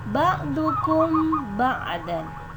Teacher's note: terdapat huruf mim berbaris sukun bertemu dengan huruf ba. Cara membacanya adalah samar-samar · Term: Ikhfa syafawi